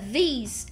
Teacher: é um I muito parecido com o i de ilha que a gente tem no português mas ele é mais longo tá então é seria como Ilha tá então a diferença de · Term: I longo